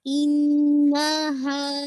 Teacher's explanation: आपका जो बॉटम हिस्सा है आपके थ्रोट का जो कि क्लोज टू चेस्ट है, आप वहाँ से अदा करेंगे और इसको पूरा आपने 2 काउंट पढ़ना है।